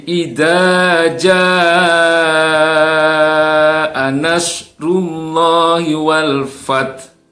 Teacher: Mad wajib mutasil, wajib dibaca panjang. Ya, tidak cukup hanya dengan 2 harokat. Ya, minimal 4 lah, 4, 5 atau 6 harokat.